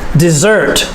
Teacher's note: the stress is on the second syllable dessert and the s has the d sound dessert i'm crazy